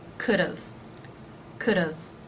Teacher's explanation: words with the have contraction all end in a consonant so rather than just adding a V sound it actually adds another unaccented syllable the schwa sound followed by the V sound